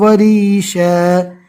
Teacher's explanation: دو زبر رکنے کی حالت میں الف مدہ بن جاتا ہے